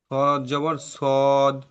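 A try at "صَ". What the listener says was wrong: এটা সদ হবে না, এটি হবে স। স যাবার স,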